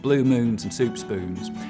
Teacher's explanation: So if I go from, say, somewhere in the Carolinas and head west and talk about blue moons and soup spoons, I'll start off with very fronted goose vowels, blue moons and soup spoons, but they'll get less and less fronted the further west I go.